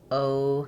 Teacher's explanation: So it is a diff thong meaning there's going to be two symbols there and we slide from the O to the uh position O. So we close as we say this vowel in English. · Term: diff thong O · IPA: /oʊ/